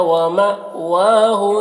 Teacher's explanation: پر حمزہ ساکن ہے جھٹکا لگے گا ، واو میں کھڑا زبر ہے ایک الف کے برابر کھینچیں